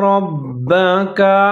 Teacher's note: را کو آپ نے موٹا کر کے آگے با کے اوپر مشدد ہے اس کے ساتھ ملا کر پڑھنا ہے